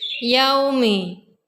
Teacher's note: Yaumi, hukumnya mad layyin karena ada wawu sukun didahului fathah. Cara bacanya sekedar lunak dan lemas.